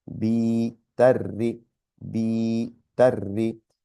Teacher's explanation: There's a ta, but there's 2 ras again. Mushadda is telling us that there's 2 ras with the I sound